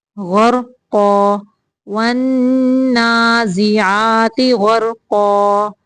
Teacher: را ساکن ہے، اس کے پچھلے حرف کے اوپر زبر ہے، اس لیے اس کی آواز کو موٹا نکالیں گے